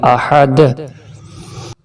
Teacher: یہاں دال پہ قلقلہ کریں گے، یعنی کہ آواز کو دبا کے پھر اٹھائیں گے